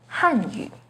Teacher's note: with the fourth falling tone on han hanyu the ping and tone for hanyu has a second rising · The pinyin and tone for Hanyu has a 2nd rising tone on Han · with the 4th falling tone on Han